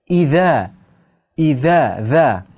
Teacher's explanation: Iza ikki harakat miqdorida cho'zamiz. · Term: Mad